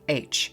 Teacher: in the Hebrew, ruach, which I'm sure you say with a rolling R